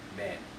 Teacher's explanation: the a becomes the e sound, so men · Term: vowel modification